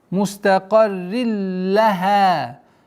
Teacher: Уходим на правила ассимиляции без назализации.